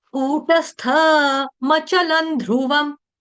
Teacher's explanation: ल के ऊपर जो अनुस्वार है उसका उच्चारण होगा अनुनासिक हलंत न की तरह